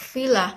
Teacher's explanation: Labiodental sound. F and V, consonant sound which are produced by contacting the lower lip and upper teeth